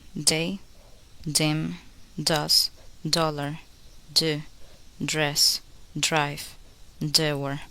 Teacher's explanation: To make the sound D, place the tip of the tongue on the alveolar ridge and make a voice sound. Hold the D silently at the beginning for a word, then release with the next sound. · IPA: /d/